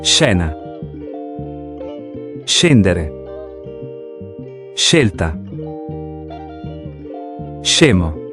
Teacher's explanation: Ito ay ang soft sound kung anong basa natin sa English kapag sh at hard sound na SK. Kapag ang SC ay sinundan ng A or E, ang basa natin ay sh sound na gaya sa English word na shoe or ship or shell. Kaya kapag SC ang basa natin ay she.